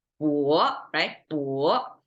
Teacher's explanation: And if we say the next word is 勃发, we have to start from a low pitch to a high pitch to make this rising tone